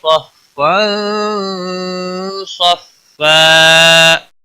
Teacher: صاد حروف مستعلیہ میں سے ہے اس لیے موٹا پڑھیں گے ، تنوین کے بعد حروف اخفا کا صاد آیا ہے اس